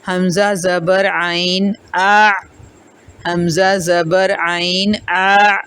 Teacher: نرمی کے ساتھ ہے، جھٹکا نہیں ہے، لیکن حلق کے درمیان سے نکالیں گے · اور 2 حروف ہیں، ایک مخرج ہے اور یہ حصہ جو ہے درمیانی حصہ ہے. یعنی کہ جب آپ ان 2 حروف کی ادائیگی کریں گے عین اور ح، تو آپ کا حلق درمیان حصے تک کھلنا چاہیے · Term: وسط حلق